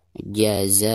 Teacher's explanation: Perhatikan ketika membaca jaza di sini dihukumi mad wajib muttasil karena ada martabai alif berhadapan dengan huruf hamzah dalam satu kalimat, dihukumi mad wajib muttasil dan dibacanya bisa 5 sampai 6 harakat ya.